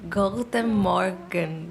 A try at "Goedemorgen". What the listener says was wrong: tá certa, certíssimo. É só a parte da pronúncia, que o G aqui é um R. Goedemorgen. Goedemorgen.